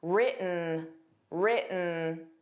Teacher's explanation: The T in written wasn't pronounced. It sounded like written, written.